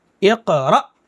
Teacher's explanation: یعنی الف پر جزم ہو تو وہ حمزہ ہو جائے گا، اور اس حمزہ کو ہم ساکن کہیں گے، حمزہ ساکنہ، اور اس کو جھٹکے کے ساتھ پڑھیں گے